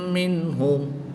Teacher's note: نون ساکن کے بعد ہا حروف حلقی میں سے ہے تو یہاں پر اظہار ہوگا، نون ساکن کو خوب ظاہر کر کے پڑھیں گے